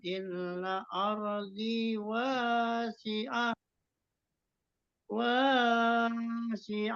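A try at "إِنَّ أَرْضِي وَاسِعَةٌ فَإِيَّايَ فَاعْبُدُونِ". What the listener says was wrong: wasia a itu enggak ada mad terus yang keduanya juga fa iya ya fa'bul ya yang kedua juga enggak ada madnya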